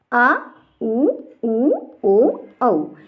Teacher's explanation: पश्च स्वर है। इन सभी का उच्चारण करने पर जीभ का पिछला भाग सक्रिय होता है। पिछला भाग अर्थात पश्च भाग सक्रिय होता है, इसी कारण इन्हें कहते हैं पश्च स्वर।